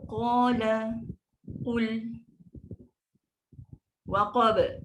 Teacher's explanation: Sebab qaf tahu dia kan sifat tebal, istilah dia tinggi. So kena angkat pangkal lidah. So qala, qul, waqab. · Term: huruf qaf